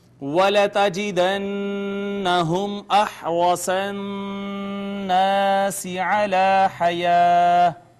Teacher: نون مشدد پہ غنہ ہوگا، میم ساکن ہے، لہٰذا یہاں پہ اظہار شفوی ہوگا، را مفتوح ہے اس وجہ سے اس کو مفخم پڑھیں گے، نون مشدد پہ غنہ، الف مدہ ہے، الف المکسورہ ہے، الف المدیہ الصغیرہ ہے۔